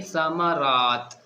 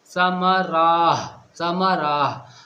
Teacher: یہاں پر ہمیں اس تا کا ہا نہیں بنانا، یہ ہے لمبی تا